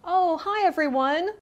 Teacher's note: Notice her voice goes up when she says oh.